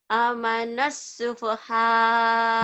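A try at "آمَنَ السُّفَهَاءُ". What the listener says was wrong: Bukan, lihat yang baik. Hanya panjang. Amanas sufaha.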